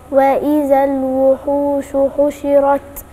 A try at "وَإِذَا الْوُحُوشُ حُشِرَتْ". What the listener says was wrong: أنا عايز أسمع الشين أفضل من كده بتاعت الوحوش، هي عايزة يعني تتحققي في إخراجك الشين وتديها التفشي اللي هو من صفاتها. التفشي يعني البق بتاعك ده بيتملي هوا وانت جاية تنطقيه.